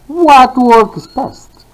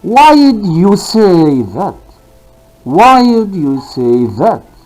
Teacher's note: the falling pattern or the falling intonation from high level to low level